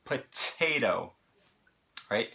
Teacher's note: the T that follows the unstressed vowel is not going to be flapped. We pronounce that just like a normal T, just like they would in United Kingdom.